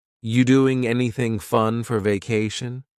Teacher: What happened to the verb are? Are you doing? It's completely gone.